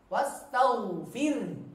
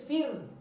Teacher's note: Fi-nya kasrah, kemudian ro-nya tipis, fir.